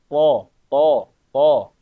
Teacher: karena to ini adalah huruf tebal, jadi belakang lidah ini seperti mengangkat ya Bapak-bapak.